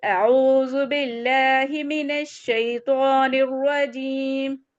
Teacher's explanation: تو عین کا مخرج جو ہے کہاں سے ہے؟ تھروٹ کے مڈل پارٹ سے